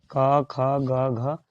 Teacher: क, ख, ग, घ आवाज बोलिएगा ना तो आपका आवाज क, ख, ग, घ का कंठ से निकलेगा। कंठ से क, ख, ग, घ, कंठ आहार नाल के पास, वहाँ से आवाज निकलेगा।